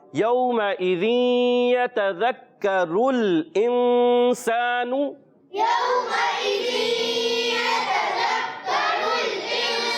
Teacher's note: نون ساکن کے بعد سین آیا, رف اخفا میں سے یعنی غنہ ادا کریں گے, ناک میں آواز لے کر جائیں گے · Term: اخفا کا غنہ